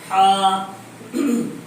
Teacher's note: ہا کا مخرج درمیانی حلق. ہا حلق کے درمیان سے نکلتا ہے